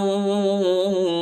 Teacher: نون کو واو کے ساتھ ملائیں گے اور غنہ بھی کریں گے